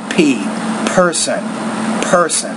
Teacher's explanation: this is a bilabial consonant what does that mean it means when you're forming it with your lips you have a lot of air that pushes out there